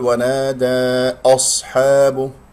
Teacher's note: لا تفخم الهمزة المرققة لأنها جاورت الصاد المفخمة